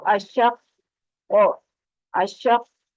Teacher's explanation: قاف پر بھی پڑھا جائے گا، اس پر قلقلہ بھی ہوگا ساکن حالت میں، اور اس کی تشدید بھی سختی سے ادا ہوگی